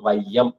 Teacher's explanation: உரையாசிரியர்கள் என்ன சொல்லிட்டாங்கன்னா ஐகாரம் சொல்லோட முதல்ல ஒன்றரை மாத்திரை அளவு ஒலிக்கும் அதாவது வையம் அப்படின்னு சொல்லும்போது அந்த வை என்ற எழுத்து ஒன்றரை மாத்திரைக்கும் அளவு ஒலிக்கும் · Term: ஐகாரக் குறுக்கம்